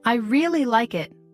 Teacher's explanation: I really like it, put stress on really.